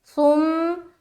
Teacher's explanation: ثم، سا میم پیش، ثم، اور میم کے اوپر چونکہ شد ہے تو میم مشدد کا غنہ کریں گے